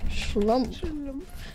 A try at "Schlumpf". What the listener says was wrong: You forgot the F. Yes, shlump.